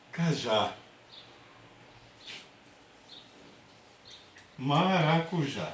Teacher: todas elas têm a última sílaba como sílaba tônica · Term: oxítona